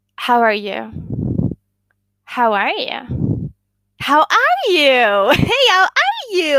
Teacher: the ascending intonation that goes up